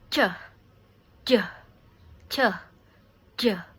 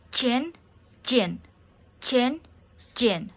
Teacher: Ch is a affricate palato-alveolar voiceless and j is a affricate palato-alveolar voice.